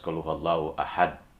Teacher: huruf dalnya mati kemudian dipantulkan, itulah yang disebut dengan qalqalah